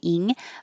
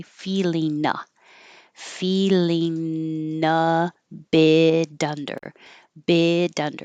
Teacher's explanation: instead of ing with the back of the tongue high, ing, I'm making an in with the tongue in the front so it can connect to the A.